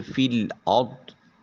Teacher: جیسے فی الارض را ساکن ہے مگر اس سے پہلے والے حرف الف جو حمزہ ہے جو الف کی صورت میں لکھا ہوا ہے اس کو ادا کریں گے، اور را چونکہ خود ساکن ہے اور اس سے پہلے والے حرف کے اوپر زبر ہے، اس لیے را کو مفخم موٹا اور پر کر کے ادا کریں گے۔ پھر ضاد حرف مستعلیہ ہے، اس کو بھی موٹا اور پر کر کے ادا کریں گے۔